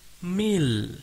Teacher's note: The sound of mim kasrah, that is diagonal line below mim, is combined with lam jalalah, that is sabdu, and read in thin sound, that is tarqiq, read mil. Then lam jalalah that is sabdu, read fathah, that is 2 harakat, read la, la, whereas the first lam after alif wasal, that is alif lam shamsiyah, is not sounded at all.